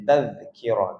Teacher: Zal yang mati pada kalimah tazkirah tidak diqalqalahkan Adapun kita lembutkan saja tazkir kalau kita qqalahkan kita baca dengan